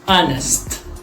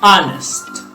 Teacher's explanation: Honest. Although it begins with the consonant H, but it sounds like a vowel, right? Honest. Therefore, the correct article that we're going to use here is the article an.